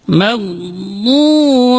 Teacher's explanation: Kemudian huruf dhad di sini sering terjadi, di sini dibaca dengan dal, maghdubi, itu salah dan artinya bisa berubah. Makanya huruf dhad ini keluar dari sisi lidah bagian belakang, yaitu hafatai lisan ma'a tawahin al-ulya. Sisi lidah bagian belakang ketemu dengan gigi geraham atas.